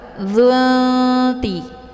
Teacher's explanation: Ini dinamakan dengan yaghfa aqrab. Cara bacanya nunnya disamarkan kemudian siap-siap masuk ke huruf ta. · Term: ikhfa aqrab